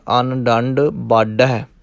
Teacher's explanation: ਪਹਿਲੇ ਸ਼ਬਦ ਨੂੰ ਥੋੜ੍ਹਾ ਜਿਹਾ ਪੋਲਾ ਬੋਲਣਾ ਹੈ। ਦੂਸਰੇ ਨੂੰ ਕਿਉਂਕਿ ਢੱਡਾ ਲਾਉਣਾ ਹੈ, ਥੋੜ੍ਹੀ ਜਿਹੀ ਦਾਬ ਦੇਣੀ ਪਵੇਗੀ।